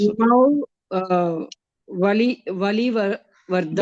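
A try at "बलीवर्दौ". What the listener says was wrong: Bali, not Vali. Bali Vardau.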